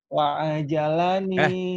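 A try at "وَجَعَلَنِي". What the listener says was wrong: Kok jadi A lagi adanya? Wajah lidahnya. Waja'alani, bukan wa'ajalani. A-nya nggak ada. Waja'alani.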